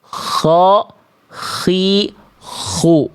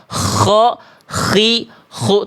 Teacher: Tapi next levelnya ketika teman-teman melafalkan huruf K yang ingin ee pengin lebih tepat lagi, K itu dia tidak sampai ngorok, Teman-teman. Dia hanya bunyi kasar-kasar saja. Ko, [mendengus] Khi, khu tuh bunyi kasar tapi halus.